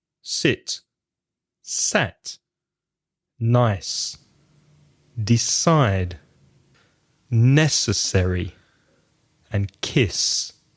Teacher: So those words have no vibration.